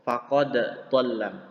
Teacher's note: Jadi tetap qalqalah, tidak diidghamkan ke huruf dha.